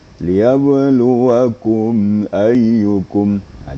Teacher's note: maka mim itu hanya sekedar menjelaskan mim mati suara tidak boleh ditahan ya lewat saja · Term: mim sukun